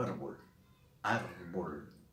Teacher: está acentuada en la penúltima sílaba y termina en consonante, que no es ni N ni S, que en este caso es L, árbol, y lleva entonces tilde, lleva acento ortográfico. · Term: grave o llana